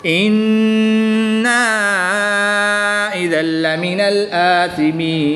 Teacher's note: یہاں پر نون مشدد ہے تو نون مشدد میں ہمیشہ غنہ ہوتا ہے ، تو یہاں پر ہم غنہ کر کے پڑھیں گے إِنَّا